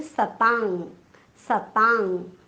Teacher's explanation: म्हणून क वर्गातलं सर्वात शेवटचं अनुनासिक क ख ग घ ङ आपण अनुस्वाराच्या ऐवजी उच्चार करणार आहोत.